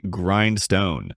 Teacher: In America, people say grindstone with a clear grind and a strong r sound. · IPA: /ˈɡraɪnd.stoʊn/